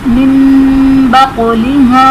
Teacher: نون ساکن کے بعد حرف بار ہے تو یہاں پر نون ساکن کو ہم میم سے بدل کر اخفا کریں گے یعنی غنہ کر کے پڑھیں گے، اور بقلہا میں قاف حرف قلقلہ ساکن ہے تو یہاں پر ہم قلقلہ کو ظاہر کریں گے۔ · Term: اقلاب